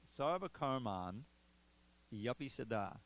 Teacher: And the next word begins with a vowel, such as api. That I turns into a Y. And in chanting it, the Y is pronounced with the next word.